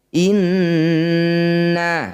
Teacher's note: nun bertasydid disebut bacaan gunnah musyaddadah. Bunyi nun kita dengungkan 2 harokat.